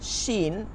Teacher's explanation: একটু সামনে আগাইলে জিব্বারটা একটু হালকা হয়ে যায়, মাঝখান থেকে বাতাস বের হয়